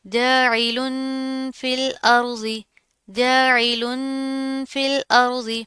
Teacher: तनवीन है, उसके बाद हरूफ इख्फा में से फा आ रहा है, तो यहाँ पर हम गुन्ना करेंगे